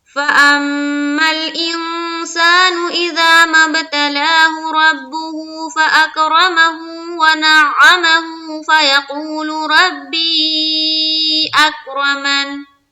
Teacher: जब मिलाकर पढ़ेंगे, हा के ऊपर जो उल्टा पेश है उसको एक अलिफ के बाकदर खींचेंगे।